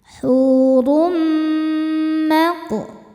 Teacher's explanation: Kemudian ada idgham bighunnah karena ada tanwin dhommah menghadapi huruf mim. Cara bacanya tanwin dileburkan ke mim, kemudian dengungkan. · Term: idgham bi gunnah